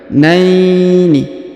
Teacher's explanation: Huruf na diayun sekali, naini, karena di depannya terdapat ya sukun